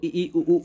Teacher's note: उ उ है ना वृत के आकार की तरह और देखिए संवृत स्वर के उच्चारण में मुख द्वार लगभग बंद रहता है